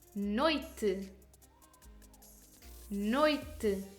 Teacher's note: O is vocalized much stronger than E, and the sound weakens as it moves from O to E. Therefore, O is the vowel and E the semivowel. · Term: decreasing diphthongs